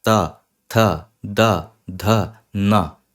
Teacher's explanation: यह सारे साउंड में आपकी जीभ आपके दात से सटी हुई है आपके दांत के पीछे है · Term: त वर्ग, ता वर्ग